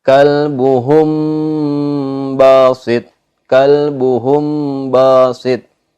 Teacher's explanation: bunyi mim mati harus ditahan sama seperti idgham mutamatsilain, yakni panjangnya dua harokat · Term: ikhfa syafawi